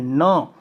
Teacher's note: तवर्ग का उच्चारण दंत से होता है, तो दंत और नासिका में ये मिल जाता है, और मिलकर नासिका से इसका उच्चारण होता है। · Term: नासिक्य